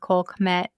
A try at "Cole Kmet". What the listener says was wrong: It's Cole-Kmet, not Coke. Cole.